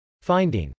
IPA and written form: fˈaɪndɪŋ (finding)